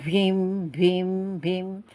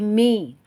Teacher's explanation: Jadi napas tertahan. Jahar itu adalah nafasnya tertahan. Mim tidak ada napasnya.